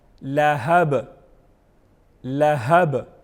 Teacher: با حروف قلقلہ میں سے ہیں تو اس کو وضاحت کے ساتھ پڑھیں گے، آواز میں جنبش پیدا کریں گے اور اس کو پراپر وضاحت کے ساتھ پڑھیں گے لہابن وقف لہب لہب یعنی با کو آخر میں ساکن کریں گے، ہلائیں گے نہیں، جسٹ آواز کو اس طرح پڑھیں گے تاکہ قلقلہ بھی پراپر ادا ہو جائے۔